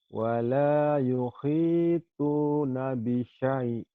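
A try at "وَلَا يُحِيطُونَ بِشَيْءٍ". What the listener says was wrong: Wala yuhituna bisyai. Ininya madlin ya. Kurang panjang madlin.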